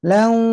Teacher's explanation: lau tanwin ketemu wau, nah, harus sembari masuk hidung nahannya. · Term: gunah